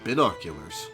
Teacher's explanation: You pronounced the first syllable as bin.